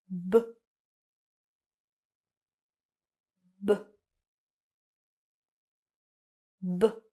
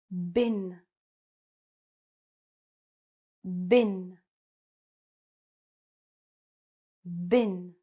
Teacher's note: So, what you're going to do, the first thing is that this B sound is voiced, which means that you're going to use your voice. So when you produce the sound, you are going to feel a vibration in your throat. And what you're going to do is basically push out the air with your lips.